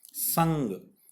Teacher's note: This is nasal sound. From your nose, the air will come out.